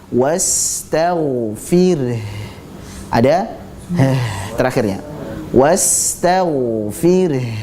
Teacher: Fir, ra-nya tipis, kemudian haknya kita tetap lafadzkan. Jangan dihilangkan wastaghfir.